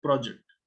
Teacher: in a word like project, when it is a noun, the stress is on the first one, project.